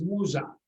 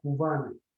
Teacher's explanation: the sounds Z and V are added between vowels. For example, Mia, which means fly, in Tsakonian is musa.